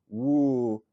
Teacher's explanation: And then, you know, oo is kind of like a W sound, but, you know, a W sound is kind of almost like an oo sound as a vowel